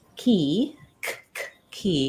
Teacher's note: when I say that sound my tongue is Lifting and touching in the back